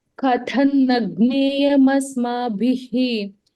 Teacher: Ka is alpa prana, tha is mahaprana.